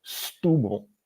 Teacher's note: So you say st instead of st, and then you say, put the accent on the U, oo, and then you swallow the last A, bull. So Setúbal is how I would hear it.